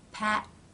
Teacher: The first part, the tongue has moved up into position, cutting off the flow of air